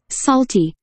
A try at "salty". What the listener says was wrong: 또 숄티 한다. 입술을 동그랗게 만들고 있잖아. 솔티. 왜 갑자기 숄티가 되냐고. 솔솔랄라는 잘해놓고 왜 숄티. 숄숄랄라냐.